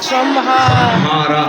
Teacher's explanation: ಆ ಅನುಸ್ವಾರದ ಮುಂದೆ ಅವರ್ಗೀಯ ವ್ಯಂಜನಗಳಿದ್ದರೆ ಯಾವ ಸೌಂಡ್ ಬರುತ್ತೆ ಮ ಸೌಂಡ್ ಬರುತ್ತೆ ಮಿಕ್ಕಂತೆ ಅನುಸ್ವಾರದ ಮುಂದೆ ಯಾವ ವರ್ಗದ ಅಕ್ಷರಗಳು ಇರುತ್ತವೋ ಅದೇ ವರ್ಗದ ಅನುನಾಸಿಕದ ಸೌಂಡ್